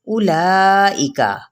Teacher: حمزہ کی پیش کو اب واو ہے نا آگے لمبا نہیں کرنا، کیونکہ واو یہاں پہ سائلنٹ ہو جائے گا، حذف ہو جائے گا